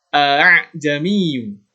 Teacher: cara membaca tashil yang benar adalah dengan menegaskan hamzah yang pertama, kemudian melunakkan alif yang kedua atau hamzah yang kedua.